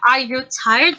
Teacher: So at the end of the sentence, there is a rising intonation